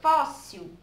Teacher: a sílaba pronunciada com mais força na palavra fóssil foi o pó não é a sílaba tônica no caso ela é a primeira